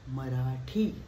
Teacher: मराठीमध्ये ह नाहीये, म ला ह जोडलेला नाही, मराठी ट ला ह जोडलेला आहे।